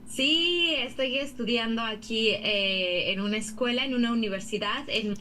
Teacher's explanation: The rhythm isn't really there. And not Venezuela, because she doesn't do the aspirated S. Not Caribbean in general.